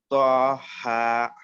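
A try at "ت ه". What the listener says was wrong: تو آپ موٹا نہیں، تا باریک.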